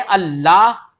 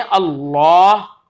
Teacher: हम कहें अल्लाह तो ये बारीक कहलाएगा, और हम कहें अल्लाह तो ये पुर कहलाएगा। तो देखो, बारीक होना, पुर होना, ये इसकी एक अंदाज है ना लाम का।